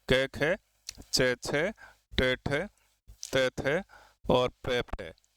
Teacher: अघोष यानी ऐसे व्यंजनों का उच्चारण करते समय स्वर तंत्री यानी जो बोलने का जो यंत्र है उसमें कंपन जो है वो नहीं होता।